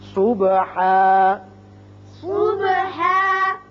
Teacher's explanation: اب جب وقف کریں گے تو ہا کھڑا ہو جائے گا